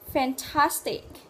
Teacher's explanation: từ cuối cùng nhấn trọng âm và âm tiết thứ hai